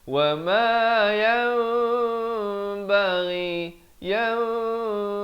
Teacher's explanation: Bunyinya ditukarkan daripada bunyi nun kepada bunyi mim dengan kadar panjang dua harakat. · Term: hukum iqlab